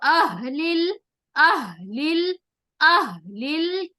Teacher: ہا کا مخرج ہمیں سینے کے اوپر سے نکالنا ہے